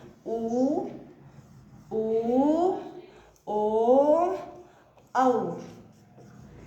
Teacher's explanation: जब हम बोलते हैं ना तो हमारे होठों की आकृति बिल्कुल गोल हो जाती है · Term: गोलाकार या वृत्ताकार